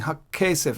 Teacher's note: Why is a strong Dagesh? Because I'm saying Hakkesef. I'm doubling the k sound. Why? Because there's a vowel before in front of it.